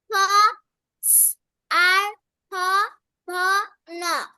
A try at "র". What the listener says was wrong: আচ্ছা ওটা আর না, ওটা হচ্ছে র।